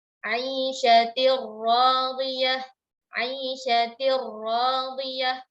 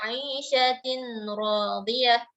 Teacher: Ya, langsung ke ra seolah-olah tanwin, seolah-olah nun itu sudah tidak ada lagi eksistensinya, melebur ke dalam huruf ra di depannya. · Tidak terdengar lagi bunyi nun dan tidak ada gunnah.